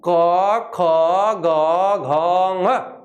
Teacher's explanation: जब आप इसको ऐसे बोलेंगे तो आपको स्पष्ट बोध होगा कि यहाँ जो हमारे कंठ के पास से जो वायु है वो स्पर्श कर रही है, और इसलिए यहां से स्पर्श होता है, यहां से निकल रहा है, ऐसे प्रतीत हो रहा है, इसलिए इन वर्णों का उच्चारण स्थान क्या हुआ, कंठ।